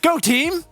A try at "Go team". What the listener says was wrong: You go up at the end.